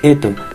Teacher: El fonema S se escucha como una H, se suprime la S por una H.